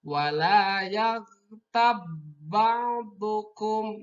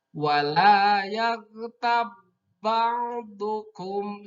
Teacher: Jadi ba yang matinya tidak terdengar, tidak memantul, tidak wala yaghtab ba'dukum, tidak seperti itu. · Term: idgham mutajanisen